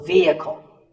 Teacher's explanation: It's often pronounced wrongly as vehicle, but the E is a long vowel and the H is silent